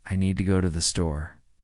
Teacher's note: The stresses are on need and store, while to and the are softer and faster. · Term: rhythm